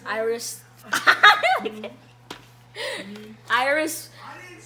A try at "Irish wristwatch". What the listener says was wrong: You said Iris though. So you gotta say the whole thing.